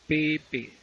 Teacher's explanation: Va a ver que el sonido se produce cuando se tocan labio superior y labio inferior. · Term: bilabiales